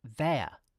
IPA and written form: ˈðeɪə (they're)